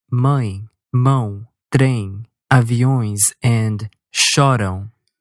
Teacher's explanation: the little short E and U sounds become nasal when the main vowel is a nasal vowel